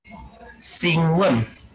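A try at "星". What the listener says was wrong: Jangan sing. C dia, Xing. Xing won.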